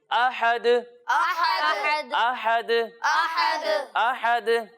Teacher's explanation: اب پیارے بچوں آپ کو یہ یاد ہوگا کہ پچھلے پروگرام میں ہم نے آپ کو بتایا تھا کہ دال حروف قلقلہ میں سے ہے، یعنی ان حروف میں سے ہے کہ اگر وہ ساکن ہو تو ان کی ادائیگی کرتے وقت آواز لوٹتی ہوئی محسوس ہوتی ہے. تو جب ہم دال کو ساکن کر دیں گے تو اس کی ادائیگی کرتے وقت آواز لوٹتی ہوئی محسوس ہوگی. یعنی اسے پڑھیں گے احد، احد، احد، احد، احد.